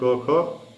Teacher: अघोष में पहला और जो दूसरा वर्ण है क ख, ये जो है वो अघोष ध्वनियाँ हैं।